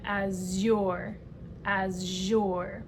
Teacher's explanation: And this is the voiced sound, the zh, as in azure, azure.